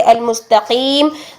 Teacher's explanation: جو موٹا قاف ہے جب کسرہ کی حالت میں آتا ہے تو اس کی تفخیم 5th لیول کی رہ جاتی ہے. ٹھیک ہے، آخری لیول کی ہوتی ہے، تو اس کی آخری لیول کی تفخیم کرتے کرتے ایسا نہ ہو کہ وہ بالکل ہی کاف میں چینج ہو جائے، باریک کاف بن جائے.